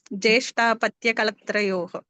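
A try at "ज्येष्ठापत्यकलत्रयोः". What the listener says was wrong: జ్యేష్ఠ అని ప్రథమ వర్ణం అంటున్నారు.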